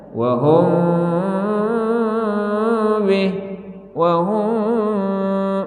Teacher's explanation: Kalau ikhfa syafawi itu samar-samarnya di bibir. Misalnya wahum bih wahum, tuh wahum itu kan ikhfa.